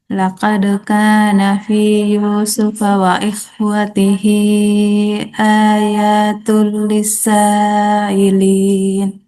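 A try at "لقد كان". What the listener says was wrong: Ya, kopunya harus dikasih tebalan sedikit. Kop. Laqad. Ya, jadi ingat itu ya. Harus tebal. Laqad ka, gitu ya. Ya, ingat yang huruf yang mesti dikasih tebal ya, harus isti'ala.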